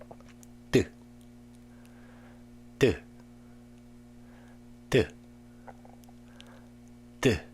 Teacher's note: And next, the D sound is made when the tip of the tongue meets the back of the upper front teeth and then falls. So the D sound is pronounced in the same place, but with a little more tongue pressure and a little more air in the fall